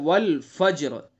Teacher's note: راء ساکن سے پہلے جیم ساکن ہوا، اور جیم ساکن سے پہلے فا ہے اور اس کے اوپر زبر ہے، تو اس لیے اس راء کو پر پڑھیں گے، تو ڈبل ساکن ہو گیا، راء ساکن ہو گئی۔